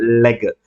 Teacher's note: air escapes through the side, అంటే నాలుక యొక్క అటు ఇటు భాగాల నుంచి · గాలి మీరు పక్క నుంచి గమనిస్తే పక్క నుంచి వచ్చేస్తుంది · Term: లాటరల్